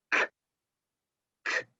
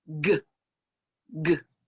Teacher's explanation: if we move that sound back further in our throat, we have the unvoiced sound, k, k, and then the voiced sound, g, g.